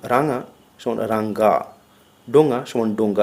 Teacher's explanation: স্বর যুক্ত হলে এদের উচ্চারণের সময় গ ধ্বনির আভাস শোনা যায়